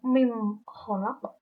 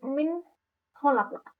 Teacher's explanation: Ketika nun mati itu bertemu dengan huruf kho, maka terbaca jelas, bukan mim kholaq tapi min kholaq. Min nunnya terbaca dengan sangat jelas. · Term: izhar